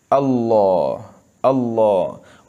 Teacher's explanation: जहाँ पे भी लाम होगा बारीक ही पढ़ा जाएगा, पुर नहीं पढ़ा जाएगा। लेकिन लफ्ज़ अल्लाह की तज़ीम की वजह से इसको पुर पढ़ा जा रहा है